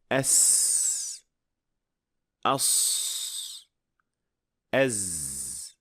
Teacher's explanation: Anda seharusnya dapat mendengar suara yang mendesis yang menyerupai siulan. Inilah sifat yang sedang kita bicarakan di sini dan yang harus dapat didengar saat mengucapkan salah satu dari huruf-huruf ini. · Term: asofir